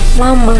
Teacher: Konsonan lateral termasuk bunyi suara yang dibentuk dengan menempelkan daun lidah pada gusi dan mengeluarkan udara melewati samping lidah